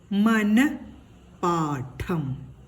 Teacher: ന എന്ന അക്ഷരം കഴിഞ്ഞിട്ട് ഹായുടെ ഒരു ശബ്ദം, ചെറിയ ഒരു ശബ്ദമാണ് കേൾക്കേണ്ടത്. വിസർഗം ഇട്ടിട്ടില്ലായിരുന്നുവെങ്കിൽ ഈ വാക്ക് മനപാഠം എന്നാണ് വായിക്കുക.